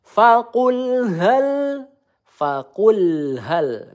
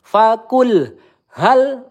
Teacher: kita baca lam sukunnya dengan tawasut ya. dia tidak mengalir dan juga tidak tertahan ya. Faqulhal kalau tertahan seperti ini.